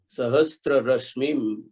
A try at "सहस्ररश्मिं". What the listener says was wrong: सहस्त्र नहीं, सहस्र।